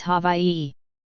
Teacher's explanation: The w and the and the i merge. The w makes a v sound since it's surrounded by vowels.